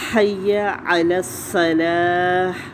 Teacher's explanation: عین کے مخرج پہ جائیں اور پھر صاد کی صفیر کو، وسلنگ کو واضح کرنا ہے۔ صلاح، تا پر ہا بنا کے وقف کیا جائے گا۔